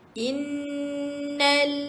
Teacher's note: bila nun sabdu kita kena sentiasa ingat nun sabdu mesti didengungkan